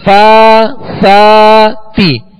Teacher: تو کھڑا زبر جو ہے یہ الف مدہ کے قائم مقام ہے، اسے دو حرکت یعنی ایک الف کی مقدار دونوں حروف کو کھینچیں گے